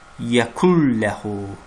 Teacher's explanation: Yazılışda yəkun ləhudur, amma oxunuşda yəkul ləhu oxunmalıdır. Yəni, burada idğam qaydası baş verir. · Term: kamil idğam